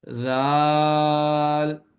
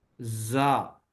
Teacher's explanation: زال کے اندر سیٹی کی آواز نہیں ہوگی، نرمی سے پڑھیں گے اس کو زال زا. زا میں سیٹی کی آواز ہوگی اور سختی سے اس کو پڑھیں گے